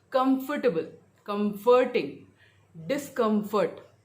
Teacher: तो हमेशा स्ट्रेस कम पे रहेगा.